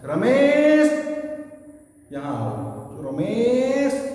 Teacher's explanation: और इसका प्रयोग हर जगह नहीं होता, इसका प्रयोग होता है संबोधन में। जब हम किसी को बुलाते हैं तो ऑटोमेटिकली स्वतः स्वर लंबा हो जाता है। · संबोधन में जो लंबा खिंच जाता है वो त्रिमात्रिक कहलाता है, वो प्लुत कहलाता है।